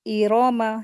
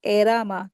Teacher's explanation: हमज़ा को ज़ेर के साथ पढ़ेंगे, लेकिन खींचेंगे नहीं,